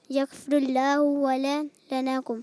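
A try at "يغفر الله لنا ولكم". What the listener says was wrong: واو نہیں ہے، لنا لنا ولکم۔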